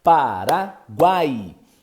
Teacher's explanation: emissão de voz então você tem o u é um semivogal uma semivogal a é uma vogal e i é uma semivogal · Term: tritongo